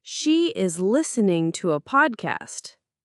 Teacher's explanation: stress listening and podcast.